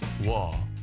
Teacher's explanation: Think of it as ㅜ plus ㅓ. Pronounce it as one syllable.